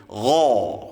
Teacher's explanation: Ini juga huruf isti'la, harus diangkat pangkal lidahnya ketika mengucapkan huruf ghain. Gha, nah, mulutnya terbuka ya.